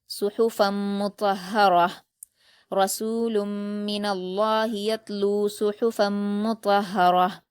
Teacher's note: आगे गोल ता पर वफ करते हुए हा साकिन में बदल जाएगा।